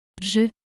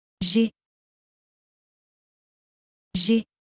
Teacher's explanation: since we have two vowels, the first one is eliminated and an apostrophe is added, and we say, J'ai.